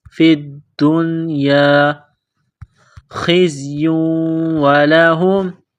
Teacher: دال کو نون کے ساتھ ملانا ہے